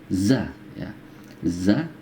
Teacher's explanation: lebih terdengar sedikit lebih kasar dan disertai dengan getaran